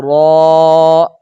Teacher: اور را، را چونکہ حروف مستعلیہ کا حصہ تو نہیں ہے، یہ حروف مستفیلہ کا حصہ ہے، لیکن اس کے اوپر زبر ہے، زبر کی وجہ سے را کو ہم پر پڑھیں گے